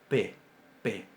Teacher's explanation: distinguen que es bilabial sorda y oclusiva. Bilabial, B, oclusiva, B, y sorda, P, P.